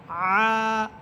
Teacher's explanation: আইন কন্ঠনালীর মধ্যখান থেকে